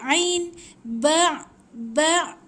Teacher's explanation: Dia keluar dekat tekak, bukan dekat hidung. Ingat. Dan dia ada lemak sikit.